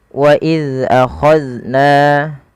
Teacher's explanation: Baik, pada lafal bacaan wa iz akhadna, di sini huruf zal, dan ya pada kedua kata ini wa iz dan akhadna, hati-hati dalam melafalkan keduanya, jangan sampai ia terpantulkan. Jangan wa iza akhadna, nah, memantul zalnya.